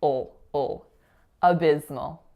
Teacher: The schwa and dark L really combined to almost make one sound